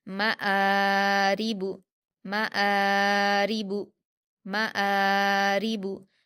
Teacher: लेकिन यहाँ पर अलिफ मद्दा नहीं है, यहाँ पर हमज़ा पर खड़ा ज़बर है अलग से, तो हम हमज़ा को खींचेंगे, मीम को जल्दी पढ़ेंगे। मआरिबु, मआरिबु, मआरिबु, रा पर ज़ेर की हरकतें जल्दी पढ़ेंगे, बारीक पढ़ेंगे, बा पर हरकतें जल्दी पढ़ेंगे।